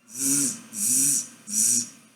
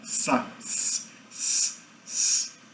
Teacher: Vibração, ou seja, o Z é sonoro e o S é surdo.